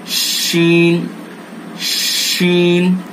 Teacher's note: आपने जहां से जीम को अदा किया है वहीं से शीन को भी अदा करेंगे, यानी जबान का बीच और उसके मुकाबिल ऊपर का तालु, जबान का बीच और बिल्कुल इसके ऊपर जाकर के हम उस बीच को लगाएंगे और अदा करेंगे।